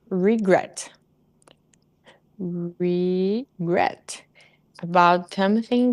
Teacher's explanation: the stress syllable is gret, so regret.